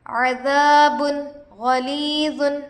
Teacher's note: عذاب غلیظ، عین پر زبر کی حرکت ہے، جلد پڑھے، الف سے پہلے زبر ہے، الف مدہ ہوگا، با پر دو پیش ہے، تنوین ہوگا، تنوین کے بعد حروف حلقی سے غین آ کر ہے، اس لیے نون کو ظاہر کر کے بغیر غنہ کے جلد پڑھیں گے، اس کو اظہار کہتے ہیں۔